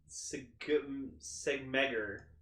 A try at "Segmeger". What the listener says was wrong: Sameger. No, Sameger. The G is silent. So it's like, say, Sameger.